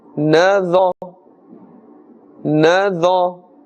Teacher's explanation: Now, dha, keep the makhraj in mind. Dha must be also pronounced with a full mouth because it is part of the huruf musta'aliyah.